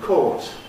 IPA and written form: kɔːt (caught)